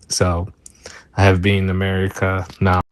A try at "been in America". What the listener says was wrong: So I think you're saying been in America, but it got collapsed and it sounded like one syllable, like been. I think part of it is maybe because of what's happening with the vowel and the N together.